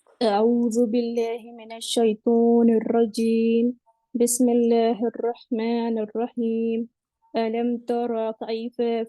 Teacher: sound of ٹریلنگ را کے اندر ایک دم پرفیکٹ سنائی دے رہی تھی